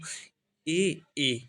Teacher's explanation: कहां से कंठ और तालू से हमारी आवाज निकल रही है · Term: कंठ तालव्य